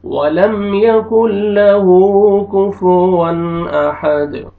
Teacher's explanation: کفوا احد ایسے نہیں پڑھنا، کفوا احد غلط، کفوا احد تو دال پہ قلقلہ کریں گے، ڈبل ساؤنڈ آئے گا